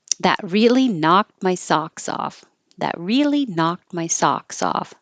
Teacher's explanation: knocked, socks, and off all have the same ah vowel. So open a lot.